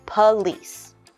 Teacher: We have our word police, 2 syllables. You'll notice there is an O, but we are going to change that to a UH sound.